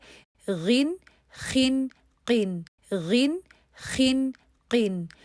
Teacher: غین، خا اور قاف تو ہمارے تھوڑے کم مفخم ہوتے ہیں بنسبت صاد، ضاد، طا اور ظا کے مقابلے میں.